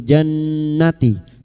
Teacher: nun yang bertasdid gunnaah musyaddadah kita dengungkan selama tiga harakat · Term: gunna musyaddadah